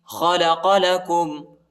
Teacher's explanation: لام کے اوپر شد آیا ہے، اس کو شدت کے ساتھ پڑھنا ہے، سختی کے ساتھ پڑھنا ہے